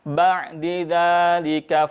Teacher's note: Huruf ain sukun, hindari menghentak, hindari memutus. Ya, yang terjadi adalah mengalirkan suaranya.